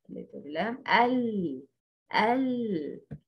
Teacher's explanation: Partial flow of sound when pronouncing letter lam, because the tip of the tongue intercepts the sound that comes out. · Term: Tawassot